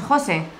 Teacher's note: Siempre el énfasis lo ponemos en jo